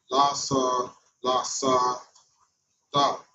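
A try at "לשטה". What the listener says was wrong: Careful, that's a shut, not a sut. Shata.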